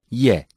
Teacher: Ye is pronounced when the middle of the tongue touches the palate.